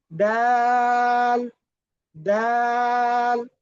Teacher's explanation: জিহ্বার আগা সামনের উপরের, সামনের উপরের 2 দাঁতের গোড়ার সঙ্গে লাগিয়ে